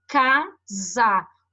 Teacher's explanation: O som desse C é o som do K, que tem aqui. O som deste S, quando a gente tem entre vogais, né? Ele tem um sonzinho de Z.